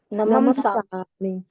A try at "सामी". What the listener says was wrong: ये नहीं है, स्वामी नहीं है यहाँ पर। बोलते हैं ना नमम स्वामी, ओनली सामी,